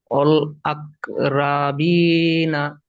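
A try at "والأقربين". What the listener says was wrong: এটা রটা পুর আছে, রর উপরে যাবার র পুর, রা হবে না, রবিনা। ওয়াল আকরবিনা, ওয়াল আকরবিনা।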